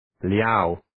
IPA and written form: ljaʊ (Liao)